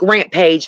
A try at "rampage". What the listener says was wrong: Rampage is one word, not two. Stop pronouncing it like it's separate. It's not. Stop it.